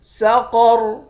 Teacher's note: قاف کو موٹا پڑھیں گے، را کو بھی موٹا پڑھیں گے